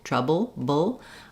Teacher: and reduced again because I'm stressing on the TR syllable and my bull is short so again I might have a little bit of an uh sound in there a short reduced schah before my L · like we have for the uh in travel in trouble trouble theb sound is both lips together together so it's made the same way as the P sound